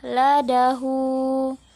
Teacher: Ho-nya ini kita keluarkan dari tenggorokan.